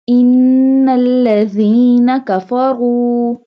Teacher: And ra has a dama sign, pesh, so we bold it.